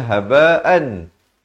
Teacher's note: Dua harakat, dengung betul-betul. Kemudian disamarkan pula. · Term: idgham bi gunnah